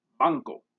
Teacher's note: finally we will talk about the velar nasal consonant this occurs wherever there is an n in front of a k or a gup we have the same sound in english such